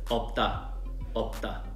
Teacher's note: But when we say out loud, it turns into 쌍디귿 because of tensification, because of the plosive sounds, and because those are consonant sounds are very aggressive and have a lot of air going out.